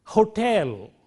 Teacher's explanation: which is a glottal fricative produced here at the glottis this is a voiceless sound